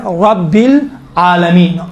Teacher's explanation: رب را کو چونکہ زبر ہے موٹا تلفظ کیا جاتا ہے